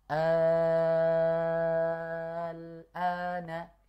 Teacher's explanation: mad badal yang bertemu dengan lam sukun. sehingga dibacanya enam harakat · Mad badal itu 2 harokat. Kemudian dia ketemu lam sukun, maka dipanjangkan menjadi 6 harokat. Maka kita baca al-ana, 6 harokat. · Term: mad farqi, ibdal